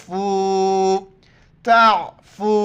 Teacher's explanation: واف کے اوپر مد ہے، 4 الف کی مقدار کھینچنا ہے، تا کو عین کے ساتھ ملائیں گے۔